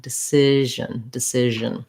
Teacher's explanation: about voicing plus the sh mouth position decision and then finally i just have a syllabic n at the end so i might have a little bit of a schwa sound a little bit of an on decision but not much vowel · That's because this syllable is also unstressed. And so I move right from the zh position to the n position by lifting my tongue.